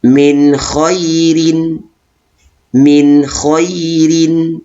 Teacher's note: sukun dibaca dengan jelas nun sukun bertemu dengan huruf Ain jadi nun sukun tersebut dibaca dengan jelas tidak boleh didengungkan atau ditahan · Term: izhar halqi